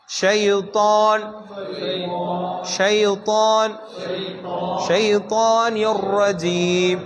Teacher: அந்த தாவை உயர்த்தி தான் சொல்லணும். இஸ்திஅலா அதாவது உயர்த்தி சொல்லக்கூடிய எழுத்துக்களில் ஒரு எழுத்து.